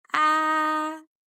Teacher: يعني أنا لو حطيت ورقة قدام بقي مش هلاقي إن النغمة دي بتكسر الهواء ولا بتأثر عليها، لا بالسلب ولا بالإيجاب. هي نغمة عالية بتطلع من أعلى طبقة صوتية عندي، ومستقيمة ما بتكسرش الهواء · يعني اسمعوا كده، آه نغمة عالية، في نفس الوقت ما فيهاش اهتزازات، طالعة من البق من الحنجرة، وفي نفس الوقت مستقيمة، ما بتكسرش الهواء قدام بقي. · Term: النغمة الأولى